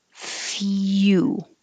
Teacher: y u sound so your tongue goes very high